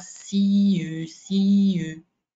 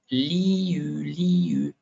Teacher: on va simplement bouger nos lèvres et changer de son en passant par le I, et ça va vraiment faciliter l'acquisition du son U.